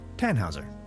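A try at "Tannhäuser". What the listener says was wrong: We'd pronounce it Tannhauser with an umlaut.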